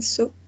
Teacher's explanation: It's voiceless. It's oral. We can see the tip of the tongue touching the alveolar ridge.